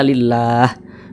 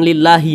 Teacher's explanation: sukunkan huruf Ha ini kalau kita berwakaf atau berhenti tepat di huruf ha maka kita baca lillah Jangan dibaca lillahi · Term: kita sukunkan